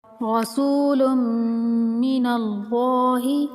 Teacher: رسول من اللہ، سین کو ایک الف کے برابر لمبا کریں گے، سین حروف مدہ ہے، اور میم مشدد پر غنہ کریں گے اور لفظ اللہ کو پر کر کے یعنی موٹا کر کے پڑھیں گے